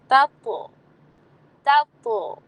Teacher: ٹھیک ہے، کویرت، تطلع، اور اس کو لمبا نہیں کرنا، تطلع نہیں بولنا، تطلع. پہلا تا باریک ہے اسمائلی کے ساتھ، اور اس کے بعد تو پر آپ قلقلہ کر رہے ہیں